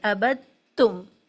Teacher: ابھی یہ سمجھیں کہ جب 2 حرف برابر برابر آئیں اور پہلے پر جزم دوسرے پر تشدید ہو تو جزم والے حرف کو چھوڑ دیتے ہیں۔ یہاں پر عبد تم لکھا ہے لیکن ابد تم پڑھتے ہیں، دال کو نہیں پڑھتے